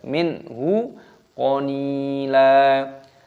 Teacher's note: nun sukun bertemu dengan ha dibaca idhar halqi, dibaca jelas.